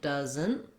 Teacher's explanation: Then when we looked at the word doesn't, we have a different spelling, but you can notice the same sound. So it also has a schwa and a Z and an N. It sounds like doesn't, even though it's spelled differently, and we have the letter S saying Z.